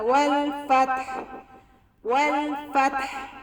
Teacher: ہا کا آواز آپ کے گلے سے نکلنی چاہیے